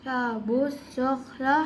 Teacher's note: ہم اس کو باؤ اور دونوں الف اور لام کو چھوڑ دیں گے. باؤ کو فوراً صاد سے ملا دیں گے